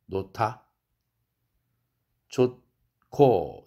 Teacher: 예를 들면 놓다, 물건을 놓다 할 때는 히읗이라는 음가와 드라는 음가가 함께 융합돼서 거센 소리, 격음으로 바뀝니다